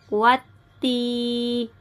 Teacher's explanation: الف اور لام کو نہیں پڑھیں گے، واو کو تا کے ساتھ ملا کے پڑھیں گے اور یا مدہ کو کھینچیں گے